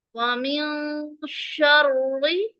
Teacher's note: را مشدد حرف ہے اور اس کے نیچے زیر ہے، اسے ہم باریک پڑھیں گے